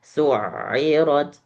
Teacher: Ini a-nya nih. A-nya yang tasydid. Jadi yang ditahan adalah ainnya. Su'airat. Su- Su'airat.